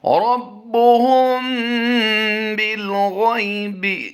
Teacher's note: غین یا زبر غی میں ہم نے لمبا نہیں کرنا، یالین کا قاعدہ ہے، یالین میں لمبا نہیں کیا جاتا